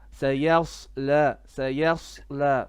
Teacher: this is a sod, so we make the sod heavy. The ya is flat.